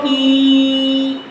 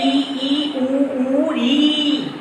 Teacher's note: बा से विस्तार होगा, सा से संकुचन होगा, यानी बंद होगी कोई चीज, बंद होने पर जोड़। तो वह स्वर जिनके उच्चारण में पूरा मुंह लगभग बंद रहता है।